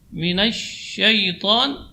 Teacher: huruf sya, juga huruf tafashi. Ya, makna tafashi intisyarul hawa fil fam.